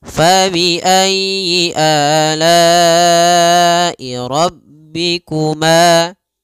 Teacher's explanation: rabbikuma pada lafal ma ada mad tabi'i panjangnya 2 harokat.